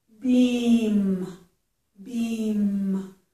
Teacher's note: So, if I start out with bee, I have to beeee then close my lips.